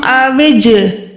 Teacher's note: قَوْلَكُمْ أَوِجْ، جیم میں یہاں پر کیا کر رہی ہوں، جیم کو لوٹا رہی ہوں، لرزش دے رہی ہوں آواز میں، کیونکہ جیم حروف قلقلہ میں سے ہے۔ جیم کے اوپر یہ جزم کی نشانی ہے تو یہ حروف قلقلہ یعنی قوف تو با جیم دال، جیم آ گیا نا قوف قلقلہ میں، یہاں پر آواز کو لوٹائیں گے۔